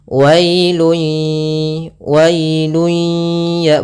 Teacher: kita namakan dengan Idgham bunah yaitu disertai dengan ghunah Idgham Artinya kita memasukkan apa yang kita masukkan adalah suara tanwinnya atau suara nunnya ke huruf ya maka hilang bunyinya tapi dia masih menyesikan suara bunyi dengan dengan gunahnya wailu wailuya